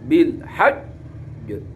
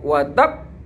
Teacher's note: ada tasdidnya, menekannya tasdid kayak baknya itu double. Kedobelan itu karena baknya itu huruf qalqalah, maka dibaca akbar, lebih besar daripada kubro. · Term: qalqalah akbar